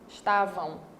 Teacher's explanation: Eu tenho aqui o A representando uma vogal e o M representando uma semivogal, porque ele tem som de U.